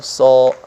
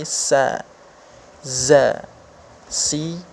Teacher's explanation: Jadi ketika mengucapkan huruf-huruf sin dan huruf zai ini, pangkal lidah kita tidak naik. Pangkal lidah kita tuh datar saja, tidak naik. Ya, dikarenakan kedua huruf ini adalah kedua huruf yang tipis. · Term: sifat istifal